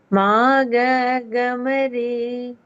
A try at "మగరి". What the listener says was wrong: రీ. రీ కొంచెం కిందకి వెళ్తున్నారు.